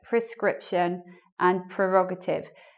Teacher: the stress is meant to be on the second syllable in those words